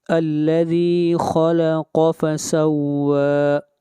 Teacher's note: واو کو کھینچ کر پڑھیں گے ایک الف کے برابر، واو کے اوپر کھڑی زبر ہے اور اس مد کو مد اصلی کہتے ہیں۔